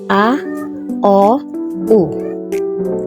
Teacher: Basta palagi niyang tatandaan, sa first 3 basic vowels, magkakaiba siya ng pagbigas mula sa A, O, U. So, paliit ng paliit ang pagbuka ng bibig.